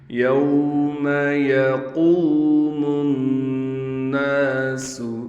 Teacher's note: قاف کو موٹا بھی پڑھیں گے، قاف کے بعد واو آنے کی وجہ سے قاف کو ایک الف کی مقدار کھینچیں گے، میم کو نون کے ساتھ ملائیں گے غنہ کے ساتھ کیونکہ نون پر تشدید آ گئی، نون مشدد پر ہمیشہ غنہ ہوتا ہے۔